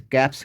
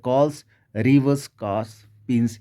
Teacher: जब voiceless consonant में एस जुड़ेगा तो साउंड आएगी स की